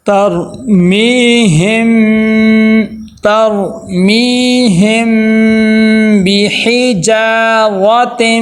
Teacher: اب یہاں پہ دیکھیں میم ساکن کے بعد کیا آ گئی ہے، با آ گئی ہے، تو ہم کیا کریں گے، اخفاء شفوی کریں گے کہ میم کی آواز کو ناک میں لے کے جائیں گے، غنہ کریں گے